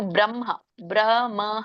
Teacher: ಸಂಯುತ ಹಕಾರ ಉದಸ್ಯ ಅಂದ್ರೆ ಎದೆಯಿಂದ ಬರಬೇಕು